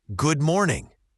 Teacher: The or in morning is a common sound in English. Make sure it's rounded.